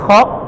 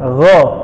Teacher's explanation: Kho dia ada getaran kasar. Kalau go dia lembutnya.